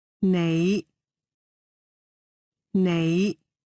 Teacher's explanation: low rising tone means you